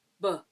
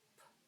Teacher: For the voiced you're really going to hear b For the unvoiced the exact same mouth position is going to say p